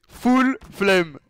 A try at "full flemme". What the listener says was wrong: Ah non, trop aigu le flemme.